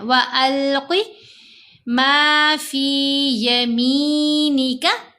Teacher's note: میم کے نیچے زیر، ساتھ یا ساکن، یا مدہ ہے، میم کو 2 حرکات کی مقدار لمبا کریں گے